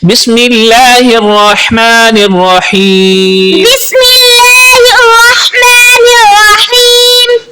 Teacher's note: ہا استعمال ہو رہا ہے جو کہ حلق کے درمیان والے حصے سے ادا ہوتا ہے